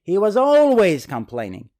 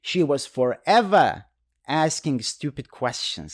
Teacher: the tone of the sentence goes up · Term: the tone goes up